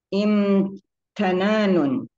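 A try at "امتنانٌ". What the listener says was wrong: Imti bukan inta. Baris bawah ya. Baris bawah.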